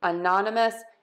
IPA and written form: əˈnɑnəməs (anonymous)